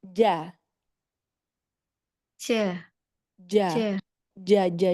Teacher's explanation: karena makhraj jim itu dia sebenarnya di tengah ya, tengah lidah ketemu langit-langit yang tengah.